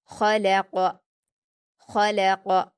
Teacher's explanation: آگے دیکھیے خلق، خواہ پر حرکت جلدی پڑھیں گے، حروف حلقی میں سے حلق سے ادا کریں گے اور پر پڑھیں گے۔ لام پر حرکت جلدی پڑھیں گے، قاف پر بھی حرکتیں سے بھی جلدی پڑھیں گے اور قاف حروف مستعلیہ میں سے ہے اس لیے اسے پر پڑھیں گے، خلق خلق۔ · قاف حروف مستعلیہ میں سے ہے اس لیے اسے پر پڑھیں گے، خلق خلق۔ یہاں پر آپ دھیان دیں گے آواز میں کہ ہم خواہ اور قاف کو پر پڑھ رہے ہیں لیکن لام پر ہمارے ہونٹ پھیل جا رہے ہیں اور ہماری آواز باریک آ رہی ہے، ٹھیک ہے۔